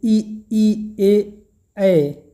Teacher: अवृत्ताकार स्वर, जिनके उच्चारण में होठों की आकृति अवृत्ताकार होती है